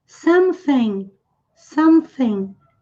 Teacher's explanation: som de S com a ponta da língua entre os dentes. O G não se fala, vejam que ele vem depois do N nas duas palavras.